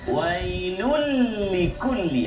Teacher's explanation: Tanwin bertemu dengan lam. Kita tak dengungkan bacaan kita. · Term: Idgham bila gunna